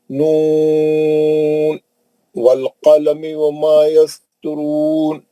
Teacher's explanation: نون کو لے کے واو میں جو ہے ادغام مال غنہ نہیں کرنا